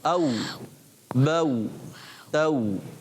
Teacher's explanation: तो होठ गोल हो जाते हैं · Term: होठों की गोलाई